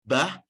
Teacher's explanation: Bah itu adalah konsonan bilabial konsonan bibir